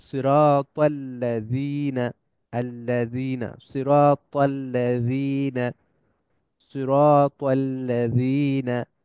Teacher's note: এখানে আলিফ silent but লামটা silent না, লামের উপর সাদ্দা আছে